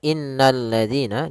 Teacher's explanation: Alif lam syamsiyah yaitu apa? Alif lam yang kita tulis tapi tidak dibaca sehingga kita langsung baca ke huruf lam yang ketiga yaitu berupa lam tasydidnya yaitu lam yang ketiganya.